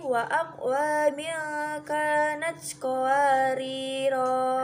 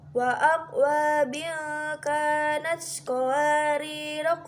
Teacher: Bila waqaf pada qawariro yang pertama, maka ro-nya dibaca panjang satu alif.